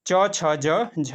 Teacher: और तालव्य से जो बोले जाते हैं दोस्तों च छ ज झ और यह दोस्तों तालव्य से बोले जाते हैं